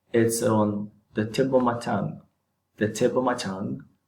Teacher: I did not separate the two words or the word and the proposition or the conjunction whatever it is so all the words are · the P is a consonant sound, and then of, the O, it's a vowel sound. So usually these two words will be linked together in terms of pronunciation to sound more fluent or natural.